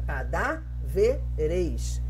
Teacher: a gente tem a acentuação, a sílaba forte, na antepenúltima sílaba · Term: proparoxítona